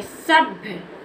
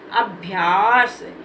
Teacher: जब आधा भा है तो इसके उच्चारण में आ साउंड नहीं बोलना है